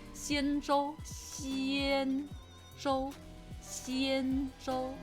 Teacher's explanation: But instead of the sh, kind of flatten it a little, if that makes sense, and bring your tongue forward.